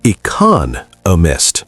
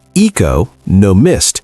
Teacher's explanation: The stress is on the second syllable, economist. If you say eco, no mist, people will have to work harder to understand you. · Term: syllable stress